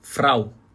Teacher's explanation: R vibrar na ponta da língua frau tá resolvido tá resolvido R na verdade basicamente você vai · Fala comigo assim, Frau, vibra na ponta da língua. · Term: r alemão, R alemão